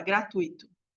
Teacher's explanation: uma vogal mais uma semivogal também tá o i quase não fala